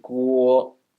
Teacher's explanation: It sounds like Americans are saying G-U-O-U guo, guo, instead of just guo. So the Mandarin word guo starts from u, blends to o